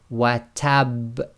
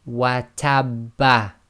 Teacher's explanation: slight echo must be audible, must be intense, but must not be converted into a fatha